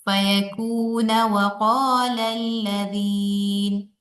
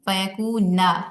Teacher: ٹھیک ہے، اگر ہم ان دونوں آیات کو ملا کر پڑھیں گے، فَإِنَّمَا يَقُولُ لَهُ كُن فَيَكُونَ وَقَالَ الَّذِينَ، فَيَكُونُ کی جگہ ہم کیا پڑھیں گے وصلاً، فَيَكُونَ، نون کو زبر کے ساتھ پڑھیں گے